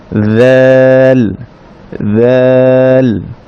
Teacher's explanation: যালে বাতাস বন্ধ থাকবে, তবে জিহ্বাটা বের করতে হবে হালকা, তবে বেশি বের করব না